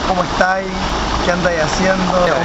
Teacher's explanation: Nos comemos la S